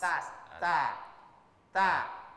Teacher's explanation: Sebenarnya adalah mengucapannya itu ujung lidah menyentuh gigi bahagian atas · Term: huruf ta